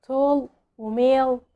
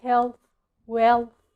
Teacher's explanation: ولكن الدارك له هي ال المفخمة زي ما بنقول في العربي كده ما شاء الله، فكلمة الله اللام فيها مفخمة، ودي بالظبط زي الدارك ال في الانجليش، واللسان فيها بيلمس سقف الفم فبنقول ال وهي اللي بتيجي اخر صوت في الكلمة او اللي بيجي بعدها صوت ساكن، وهي اللي بتيجي اخر صوت في الكلمة زي كلمة tall وميل، هي برضو اللي بيجي بعدها صوت ساكن زي كلمة health well.